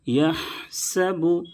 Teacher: یحسب، یحسب، بڑی ہا ہے، اس کو درمیانی حلق سے ادا کریں گے۔ یحسب، سین کی ادائیگی میں پتلی سیٹی جیسی آواز نکلنی چاہیے